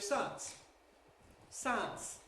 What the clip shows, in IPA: saəns